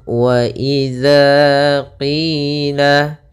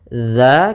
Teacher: bukan akan tetapi dia dalzal kecil dza posisi lidah kita adalah ujung lidah kita menempelkan dengan gigi seri atas atau sedikit tergigit